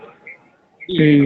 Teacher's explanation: तुम बी बोलोगे तो तुम्हारे होठ आपस में बंद हो जाएंगे दोनों